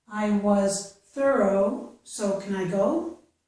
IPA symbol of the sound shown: oʊ